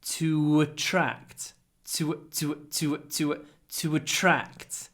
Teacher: Remember that before a vowel, we add a little w after to.